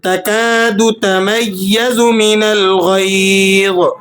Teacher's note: غین اور ضا یہ دونوں حروف مستعلیہ میں سے ہیں اور دونوں پر کر کے موٹے کر کے پڑھے جاتے ہیں